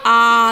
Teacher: अ plus अ से मिलकर आ, तो बोलने में ज़्यादा टाइम लग रहा है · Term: दीर्घ